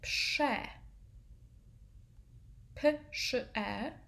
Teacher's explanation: RZ is actually a little bit fainter. It's not like a thick zh sound. It's more like the SZ, which is sh.